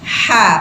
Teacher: bukan Kha Kha tapi Ha Pakai Tengah tenggorokan